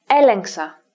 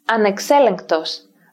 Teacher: In these clusters, gamma is always pronounced like an N sound.